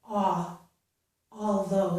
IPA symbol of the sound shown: ɔ